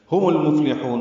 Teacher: میم کو لام سے ملا دیں گے، اظہار قمری ہوگا۔ فا ساکن پہ ہم سے لام باریک ہے، ہا کو لمبا کریں گے وسط حلق سے ادا کرتے ہوئے۔